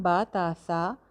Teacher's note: इसमें जो एक और इशू आ सकता है वो ये है कि जो अलिफ़ की साउंड हम बा के साथ लगा रहे हैं, क्योंकि बा ता और सा को हम अलिफ़ लगा के पढ़ रहे हैं। बा ता सा, एक एक अलिफ़ लंबा कर रहे हैं